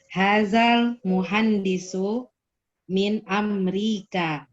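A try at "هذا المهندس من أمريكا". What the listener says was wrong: Saya mendengarnya tadi kurang jelas al-nya. Hadzal muhandisu min Amerika. Hadzal muhandisu min Amerika.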